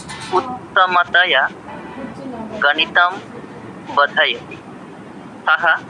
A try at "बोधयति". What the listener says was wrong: বোধয়তি, বয় ওকারটা দীর্ঘ উচ্চারণ হবে, বোধয়তি।